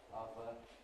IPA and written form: ˈʌðə (other)